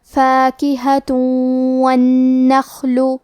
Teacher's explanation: کلمت والنخل واو حروف الادغام بغنہ میں سے ہے اور ادغام کا معنی ہے حرف کو حرف میں داخل کرنا. تو ہم یہ تنوین کو واو میں ملا کے غنہ اور تشدید کے ساتھ یہ حکم کو ادا کریں گے · کلمت النخل میں حرف نون پہ تشدید ہے تو ہمیں 2 حرف کے برابر نون کو پڑھنا ہے کیونکہ تشدید کی اصلیت 2 حرف ہے.